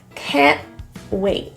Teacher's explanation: notice the T's were pronounced as glottal T's in the throat.